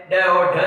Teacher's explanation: ताड़न जात होता है ड और ढ, जिसके नीचे बिंदी वो ताड़न जात की श्रेणी के अंतर्गत आते हैं।